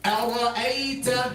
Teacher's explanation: Hamza light, Ra heavy, Hamza light.